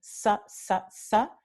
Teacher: So the S that you know and pronounce all the time, sa, es predorso alveolar. El predorso de la lengua está tocando los alveolos.